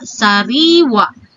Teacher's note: mga salitang binibigkas na may impit sa huli at ang diin ay nasa ikalawang pantig mula sa huli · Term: penultima